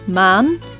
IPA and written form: ma:n (Maan)